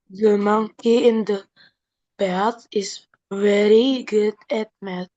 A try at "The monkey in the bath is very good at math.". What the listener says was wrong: Yes, dikit doang ya. Kurang disambung good sama at-nya, good at.